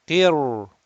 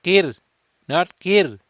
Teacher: we are going to recite this ra sakin with tafkheem, rounded